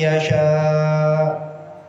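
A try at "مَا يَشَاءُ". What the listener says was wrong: Itu seperti hamzahnya hilang. Jadi ini hamzah harus tetap kita baca. Kemarin kan huruf hamzah itu keluarnya dari mana nih? Tenggorokan kita nih, leher kita yang paling bawah di sini. Ha ha ha. gitu. Jadi ada dihentak di ujungnya. Enggak mayyasha, enggak gitu. Tapi Gitu kayak lagi jalan kepentok blok aja udah diam. Gitu.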